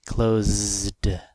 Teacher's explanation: so we have a voiced sound here close close and then the Ed is added and it sounds like a voiced D